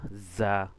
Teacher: তারপরে যা, যাটা সবসময় কি হয়, শক্ত হয়। একটা ধাক্কা দিবেন জিহ্বা দিয়ে, দাঁতের শাখার সাথে লাগায়া যা